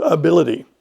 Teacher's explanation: It sounds like that last consonant sound is a D sound, ability. But if you were to look that up, it's spelled I-T-Y, ability.